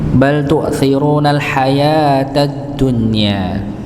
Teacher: Bal tu'thirunal hayatad dunya, tidak ada tekanan di situ pada hamzah. Ya, tu'thiruna, ru-nya dibaca dua harakat